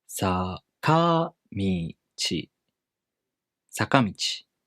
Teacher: The pitch stays high till the accented mora, and it goes down. · The first mora starts low in pitch. Following the rule #1, the pitch goes up after the first mora. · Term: middle-high pattern